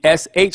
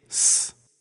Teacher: The closest we can get to the sh sound in Greek is s, the plain S sound. So we take the Greek letter sigma and it gives us the s sound.